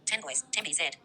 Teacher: The n becomes m before b. This can happen across word boundaries because post-lexical rules operate at the phrase level. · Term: assimilation